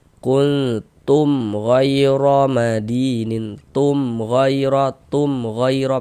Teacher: Dan izhar syafawi itu dibaca dengan tidak berdengung. Baca jelas dan tidak berdengung, tidak digunahkan. · Maka dibaca jelas, tak berdengung, baca pendek saja. Kuntum ghairu madinin, tum ghairu pendek gitu. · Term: idhar syafawi